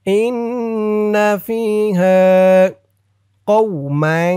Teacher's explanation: ইন্না ফিহা فيها إن فيها قوما এখানে ইকফা গুন্নাহ, কারণ এই তানবিনের পরে পরের লাইনে দেখুন ইকফার হরফ জিম আসছে, তাই এখানে ইকফা নাকের ভিতরে লুকিয়ে গুন্নাহ করে পড়তে হবে।